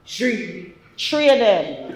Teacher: Another thing you'll see in Gullah Geechee speech patterns is the omission of digraphs like TH.